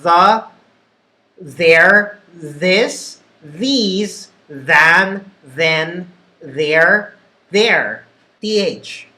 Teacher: your tongue touches the roof of your mouth, but not fully. The tip is sticking just a little bit, and you feel some form of vibration happen when you make the TH sound.